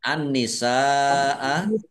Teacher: nun tasdid dibaca ghunah atau mendengung ditahan dua harakat biar tampak mendengung . Sin fathah alif mad thobi'i. Tetapi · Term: gunnah